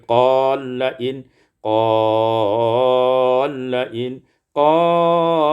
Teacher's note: idghamul lam fil lam, diidghamkan lam pada lam maka menjadi qalain